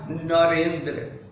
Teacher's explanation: और आप गौर करें तो पाएंगे कि अ और ई ये दोनों ही स्वर वर्ण हैं और ये अ और ई मिल करके ए हो गया है। अ और ई के बीच में जब संधि हुई है तो विकार उत्पन्न हुआ है, उच्चारण में परिवर्तन आया है, ध्वनि में बदलाव आया है, वह बदलाव ए का है। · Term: स्वर संधि